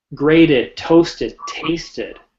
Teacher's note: they all have the id sound because the root word ends in a t or a d or the final consonant in that root ends with a t